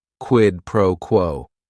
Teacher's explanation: Each word is only 1 syllable. And if you're saying it together, the stress is kind of on that first word and that last word